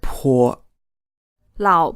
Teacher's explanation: this word is pronounced with a third tone and then a neutral tone which means the second syllable of his word is not stressed